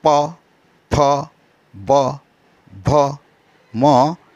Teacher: इन्हें ओष्ठ व्यंजन भी कहते हैं, यानी प, फ, ब, भ, म। इन सब वर्णों को उच्चारण करते समय दोनों होंठों का व्यवहार किया जाता है।